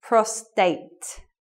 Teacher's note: it should be prostate with no R sound